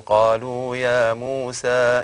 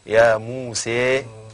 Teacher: الإمالة الكبرى ليس إلا لحمزة ولا لكسائي، أما ورش فهو يقلل، تقول قالوا يا موسى إنا لن ندخل، لا تقول يا موسى لا نعم. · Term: التقليل